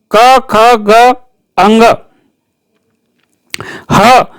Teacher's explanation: अ, क वर्ग, क, ख, ग, अंग, ह और विसर्ग का उच्चारण स्थान कंठ है